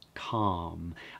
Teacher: Notice that I'm not pronouncing the L